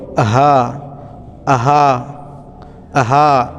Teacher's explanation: কণ্ঠনালীর নিম্ন ভাগ হতে একদম কণ্ঠনালীর নিম্ন ভাগ আমরা গম্ভীর আওয়াজে বলবো